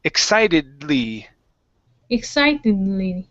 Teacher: we're going to connect the D and the L here